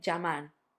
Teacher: We could say llamar, we can say llamar, like a y. Or some people in some countries would say llamar, like a j. So you've got many options, and if you want to say, I think the easiest way for English speakers is normally to say it as a y.